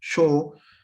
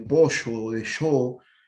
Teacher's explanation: En el español rioplatense, por ejemplo, el sonido fricativo, posalveolar, yo